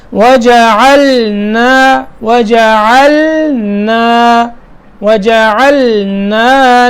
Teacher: وَجَعَلْنَا پھر نون کی ادائیگی الگ کرنی ہے، یعنی وَجَعَلْنَا ایسے نہیں پڑھنا، لام صاف ہو اور اس کے بعد نون، یعنی لام کی ادائیگی الگ ہے نون کی الگ ہے، تو یہاں دو حرف ہیں دونوں کو الگ الگ کر کے پڑھنا ہے.